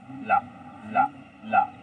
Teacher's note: इसमें जो जीव है, जो वायु होती है, वायु जीव के बगल से निकलती है, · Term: पार्श्वरिक व्यंजन